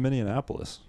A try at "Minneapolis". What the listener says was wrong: Minneapolis. You added a syllable, I think. You went Indianapolis. You combined Minneapolis. No, you combined Indianapolis with Minneapolis to get Minneapolis, which is fine.